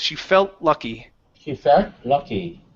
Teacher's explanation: hide that T, mix it between the L's